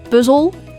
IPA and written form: pʏzəl (Puzzel)